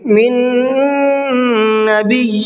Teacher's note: پہلے نون کا دوسرے نون میں ادغام کر دیں گے، دونوں کو ایک جگہ مکس کر دیں گے۔ تو اب کیا ہوگا، پہلا نون نہیں پڑھا جائے گا بلکہ دوسرا ہی نون پڑھا جائے گا۔ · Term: ادغام نون